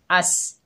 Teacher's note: सीन सख्ती और सीटी वाला हरूफ है